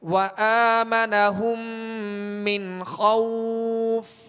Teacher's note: نون ساکن کے بعد خا ہے، خا کون سے حروف میں سے؟ حروف حلقی میں سے، لہذا یہاں پر اظہار کریں گے، غنہ نہیں کریں گے